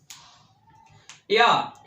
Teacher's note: या हमारा बोला जाता है तालु से।